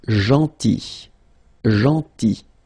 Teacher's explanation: So remember this final L is not pronounced.